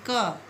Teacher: का गले से, कंठ से आवाज़ निकलती है, तो गले से उस ध्वनि का स्पर्श हो रहा है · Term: स्पर्श वर्ण